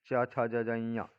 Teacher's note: दूसरा च वर्ग, च छ ज झ ञ, ये तालु का स्पर्श करते हैं।